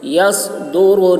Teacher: صاد موٹی آواز میں، را بھی پر ہوگی